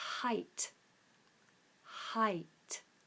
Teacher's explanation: we just have this nice open H at the beginning and aspirate H not constricted · in the UK we open up the throat and we do a nice aspirate